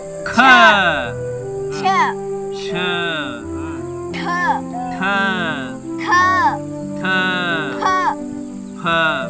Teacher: ಹೆಚ್ಚು ಉಸಿರಿನಿಂದ ಉಚ್ಚರಿಸಲಾಗುವ ಅಕ್ಷರಗಳು ಮಹಾಪ್ರಾಣ ಅಕ್ಷರಗಳು.